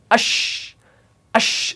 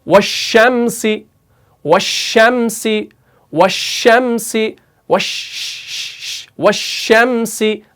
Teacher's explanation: बल्कि आपने एक गैप रखनी है, तो शीन यानी जुबान को स्लाइडली ऊपर लेना है, लेकिन टच नहीं कराना, तो तब जाके शीन निकलेगा।